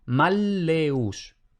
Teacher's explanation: se pronuncia como una L larga o como una doble L, no se pronuncia como en español